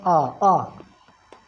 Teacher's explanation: आ एक ऐसा शब्द है जिसके उच्चारण में मुख पूरा खुलता है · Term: विवृत स्वर